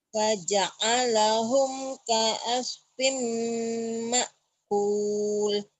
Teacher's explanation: Firnya jadi fim ya, idgham biguna.